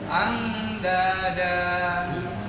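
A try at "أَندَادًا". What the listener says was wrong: Belum. Jadi berasa lama nih. Andada.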